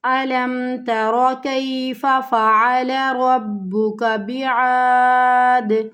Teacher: آخری حرف ساکن، پیچھے حروف مد، تو 3 الف کی مقدار کے برابر کھینچتے ہوئے وقف کرتے ہوئے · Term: مد عارض